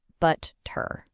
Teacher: In a more standard American or British pronunciation, you hear that sharp t sound right in the middle